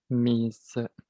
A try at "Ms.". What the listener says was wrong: It's pronounced like a Z.